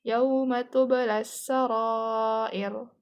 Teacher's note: Karena ro-nya itu di akhir ayat, jadi dia tuh dibacanya kan, jadi kan dia di akhir ayat dan dia tuh waqaf, jadi dibaca tuh tebel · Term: ro tafkhim